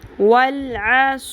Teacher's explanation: سیٹی کی آواز لے کے آئیں، سیٹی کی آواز آتی ہے صاد میں، صرف سین اور صاد میں ڈفرینس یہ ہے کہ صاد کو ہم نے پر کرنا ہے، سا کی طرح نہیں پڑھنا صاد کو